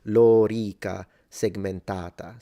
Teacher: So the O is long, just like Lorica, segmentata. So the A in segmentata is long, and both the O and E in lorica are both long.